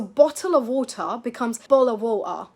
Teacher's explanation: One more thing that is worth knowing, you'll hear something called a glottal stop in some British accents, where the T basically disappears and gets replaced by a little catch in the throat, like bottle of water.